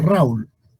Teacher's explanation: la diferencia entre el diptongo y el hiato que el hiato cuando hay dos vocales juntas se pronuncian como sílabas distintas